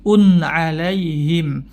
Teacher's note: ada tanwin bertemu huruf Ain maka tanwinnya dibaca jelas bunyinya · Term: izhar